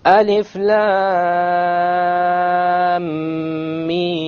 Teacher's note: So the lam 6 harakas, the mim 6 harakas, and in between the 2 ghunna of 2 harakas.